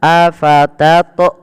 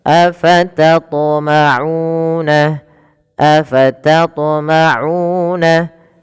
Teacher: Harusnya qalqalahnya, pantulannya tidak ada menambahkan hamzah. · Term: qalqalah sughra